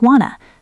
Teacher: In fast English, want to often sounds like wanna.